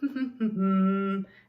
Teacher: so we keep our lips together mm-hmm and we're keeping that air in so that's how we would produce the letter M now let's